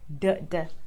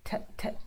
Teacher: Some bits of air, not as much as t, t. T has a lot more air. D, d. Not so much air.